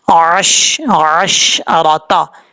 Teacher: عین کو پڑھتے ہوئے حمزہ کی آواز نہیں آنی چاہیے، عین کی آواز آنی چاہیے. اکثر لوگ یہاں پہ غلطی کرتے ہیں، عین کو حمزہ پڑھ جاتے ہیں.